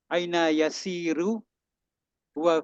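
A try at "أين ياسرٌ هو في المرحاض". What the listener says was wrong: Aina yasirun, Tanwin?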